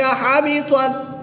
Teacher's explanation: یہاں پر تا کے اوپر زبر ہے اور تا ساکن ہے۔ تا کو پر پڑھیں گے اور ساکن تا کو باریک پڑھیں گے۔